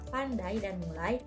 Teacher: Ciri-cirinya ada pergeseran posisi lidah dan diucapkan dalam satu hembusan napas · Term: diftong